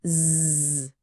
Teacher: Coloca a mão na sua garganta, agora fala zzz. Sentiu vibrar? Isso é um som vozeado.